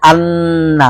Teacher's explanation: নুনের সময় জিহ্বার আগা ছিল দাঁতের ঘোড়ায় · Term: নুনের গুন্না